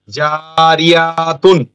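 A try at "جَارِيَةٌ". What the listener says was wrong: ইয়া কেন টানবে?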